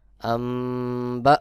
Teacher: হিম [music] আসমু এখানে দেখুন মিম সাকিনের পরে আমি গুন্নাহ করেছি মিম সাকিনের পরে যখন বাহ চলে আসবে তখন এখানে মিম সাকিনের ইকফা হবে অবশ্যই গুন্নাহ করতে হবে